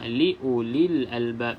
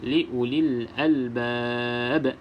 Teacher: Dan akhirnya huruf ba kita baca dengan qalqalah, iaitu lantunan. Lantunan di sini lantunan yang kuat, iaitu qalqalah kubra.